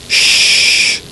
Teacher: we move the tongue a little further back make the groove wider and no voice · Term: SH sound